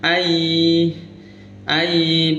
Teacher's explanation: Jadi idgham memasukkan suara nun sukun ke ya. Ayi ayi beserta mendengung berarti ditahan juga. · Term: idgham bighunna